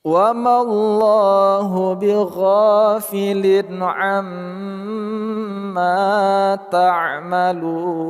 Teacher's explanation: Lafaz Allah kita baca secara tebal atau tafkhim. Bighofilin, gho panjang dua harakat.